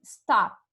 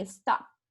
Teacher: Então, a gente diz na língua inglesa que é um som desvozeado, assim. Não treme a garganta. Então, ele não produz som.